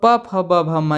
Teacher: ये याद कर लीजिएगा, इसमें बहुत आसान है क्योंकि प जैसे आप बोलेंगे तो दोनों ओठ आपस में मिलते हैं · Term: ओष्ठ